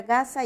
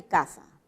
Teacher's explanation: En el punto de articulación, es un fonema velar, ¿no? Y es sonoro. En cambio, el fonema K es un fonema también velar, pero sordo.